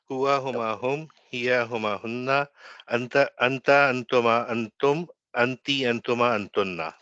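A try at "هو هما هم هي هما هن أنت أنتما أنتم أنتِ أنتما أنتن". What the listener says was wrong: Fantastic, very good.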